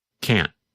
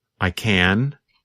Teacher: n n lasts longer than in the negative form in fact in the negative form because the tongue and voice stop there is almost no sound of the letter N